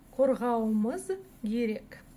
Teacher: слово «керек», которое начинается с глухой буквы «К», может произноситься как «герек» через букву «Г», через звонкую букву «Г»